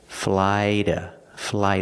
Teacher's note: we're using a fast D sound like water bottle and we're using the short schwa sound